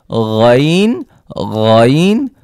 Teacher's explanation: গাইন গড়গড়া করার মতন আওয়াজ